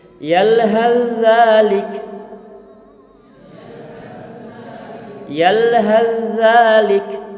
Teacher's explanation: huruf ta-nya telah diidghamkan pada huruf dzalnya sehingga menjadi satu huruf dzal yang bertasydid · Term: idgham mutajanisain